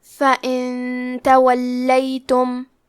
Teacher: اخفاء کا معنی ہے چھپا دینا، تو ہم نون ساکن کو چھپاتے ہوئے اور غنہ کے ساتھ یہ حکم کو ادا کریں گے۔ فَإِن تَوَلَّيْتُمْ، کلمت تولیتم میں حرف اللام پہ تشدید ہے تو ہم 2 حرف کے برابر لام کو پڑھیں گے۔